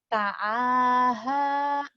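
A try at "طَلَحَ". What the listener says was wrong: Alif nggak mungkin ada di tengah. Kalaupun ada di tengah, dia pasti nggak nyambung. Karena termasuk huruf-huruf egois. Huruf-huruf yang nggak bisa nyambung. Talaha.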